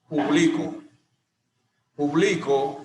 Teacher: Su mayor fuerza o intensidad recae sobre la penúltima sílaba. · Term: palabra grave o llana